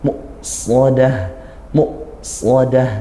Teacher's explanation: Jangan, karena hamzah sukun ditekan. Muqsadah ditekan, nah seolah dia suara berhenti seperti saktah, tapi tidak saktah ya, tapi dia menyempurnakan sifat huruf hamzah ini. Muqsadah, muqsadah, setelah sempurna hamzah baru langsung shad.